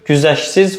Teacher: İkinci hecadakı t samiti tələffüz zamanı düşür.